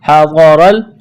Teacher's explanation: حَضَرَ، ہا اور غاد کو جلدی پڑھنا ہے بغیر کھینچ کے، غاد کو موٹا کرنا ہے، را کو موٹا کرنا ہے